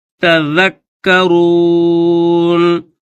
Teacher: ذال کو کاف کے ساتھ ملا کر پڑھیں گے کیونکہ کاف کے اوپر بھی تشدید ہے